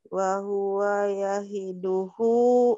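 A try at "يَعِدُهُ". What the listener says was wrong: Ya'i bukan yahi ya. Ya'i.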